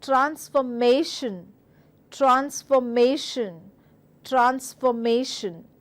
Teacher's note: ma and that's also one of the winner vowel sounds so you're supposed to stress on ma